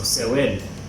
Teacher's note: there's no K, P, or T sound. It's a soft ending, so sewen. So it gets the falling tone.